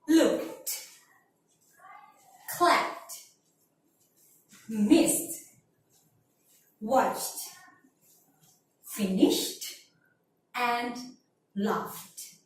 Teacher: cannot feel the vibrate on your throat when you say these words, it means there are voiceless sounds. So when you feel no vibrate on your throat, you have to pronounce that verb sounds like E.